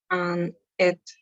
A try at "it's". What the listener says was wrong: it's. No te olvides la S, it's.